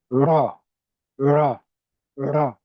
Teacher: air passes with the light trill or tap